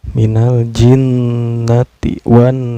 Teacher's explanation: Nah, di sini nunnya dihukumi gunnah ya, karena nun yang bertasdid. Cara baca nun bertasdid ini didengungkan ya.